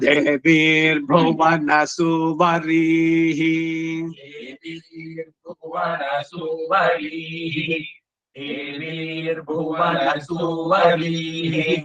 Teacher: ಪತಯಹ ಈ ವಿಸರ್ಗ ಕಡೆನಲ್ಲಿ ಇದೆಯಲ್ಲ ಅದು ಬಹಳ ಮುಖ್ಯ ಗೊತ್ತಾಯ್ತಾ ದೇವಿ ಭುವನ ಸುವರಿ ಅಷ್ಟೇ ಬಿಟ್ಟುಬಿಡುತ್ತಾರೆ ಸುವರಿಹಿ ವಿಸರ್ಗ ಅಲ್ಲಿ ಕೇಳಿಸಬೇಕು ಸರಿಯಾಗಿ